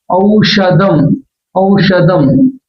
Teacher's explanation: ఈ ష చదివేటప్పుడు ష ఈ మూర్ధన్యం వైపు గాలి నెట్టబడాలి అంగుడి వైపు అందుకు అలా చదివినప్పుడు అది ష అనే శబ్దం వస్తుంది ఔషధం ఔషధం ఇక్కడ